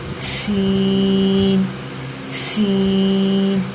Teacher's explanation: سین کا مخرج ہے زبان کی نوک اور اوپر نیچے کے دانت جب آپس میں ملے، زبان کی نوک اور اوپر نیچے کے دانت جب آپس میں ملیں۔